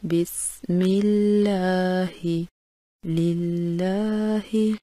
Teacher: لفظ اللہ سے پہلے اگر زیر آ جائے تو اس کے دونوں لام کی ادائیگی باریک کی جاتی ہے